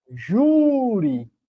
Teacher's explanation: A palavra júri, ela é uma palavra paroxítona, porque a sílaba tônica é a penúltima.